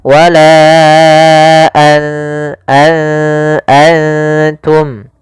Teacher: Maka apabila ada nun sukun atau dia huruf yang tanwin, an, in, un, karena tanwin dan nun sukun itu sama bunyinya, kedua-duanya adalah bunyi n, maka ketika bertemu ta, nunnya disamarkan ke huruf ta, an langsung kepada makhraj daripada makhraj huruf ta. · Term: ikhfa